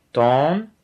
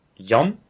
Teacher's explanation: Il s'agit souvent d'une question de longueur de la voyelle accentuée. Dans tan, un seul n. Le a sera long. Dans yan, deux n. Il sera très bref.